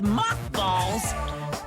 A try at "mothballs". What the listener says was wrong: Moth or moss? Because that says moss, but it sounded like you said moth.